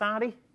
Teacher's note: You'll notice the TH, so rather than they, he's saying day. And actually there, it sounded closer to D, RD.